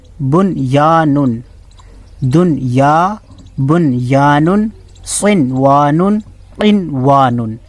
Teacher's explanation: ان 4 کلمات میں غنہ نہ کریں۔ دنیا، بنیا، تو اس طریقے سے اس کی آواز نہیں آنی چاہیے۔ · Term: اظہار مطلق